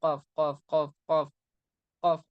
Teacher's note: जीभ के आखिर से कौफ आता है